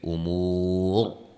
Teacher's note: وقفاً را کو خوب موٹا کر کے پڑھیں گے